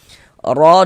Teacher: Dibaca tafkhim, dibaca tebal, sehingga dengan menaikkan pangkal lidah kita ketika kita mengucapkannya. Ra dibaca panjang.